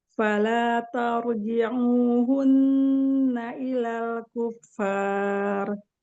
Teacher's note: Kata mad juga tipis, hanya huruf r yang tebal.